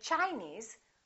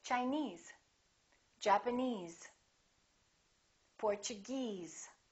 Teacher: If the word ends with ese, we stress the suffix. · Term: syllable stress